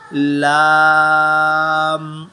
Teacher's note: زبان کی ٹوک اور لام کی آواز کے لیے زبان کی ٹوک اس کا بالکل فرنٹ جو ہے، آگے والی جو اس کی نوک ہے زبان کی، اس کو اپر پیلیٹ کے ساتھ ٹچ کرتے ہیں